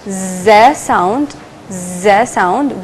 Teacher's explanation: we will notice that there is vibration in our throat